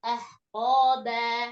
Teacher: ba tipis lidahnya langsung diam